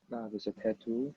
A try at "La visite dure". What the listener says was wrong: Alors, no need to pronounce last. La visite dure. Attends, be careful. You try not to pronounce you just say la visite dure. Ouais, dure